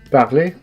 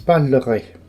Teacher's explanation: When we are using the infinitive, parler, we never hear the orthographic R at the end of this word. But in the conditional, you always hear the R. Hence, parlerai.